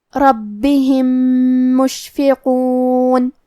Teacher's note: کیونکہ را پہ زبر ہے تو حرف را کا حکم ہے تفخیم، ہمیں را کو موٹی آواز میں پڑھنا ہے